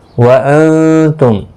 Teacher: نون ساکن کے بعد حروف اخفا کا تا ہے، اخفا حقیقی ہوگا، غنہ کے ساتھ پڑھیں گے